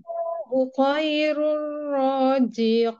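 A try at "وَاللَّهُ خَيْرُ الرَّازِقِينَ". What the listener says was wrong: Zaya bukan ja, bukan ja.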